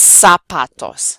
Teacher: pronounced like an S. It's not voiced.